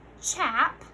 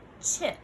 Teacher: For this one, we needed to change our medial sound, or the sound in the middle, from our vowel sound ah to our vowel sound I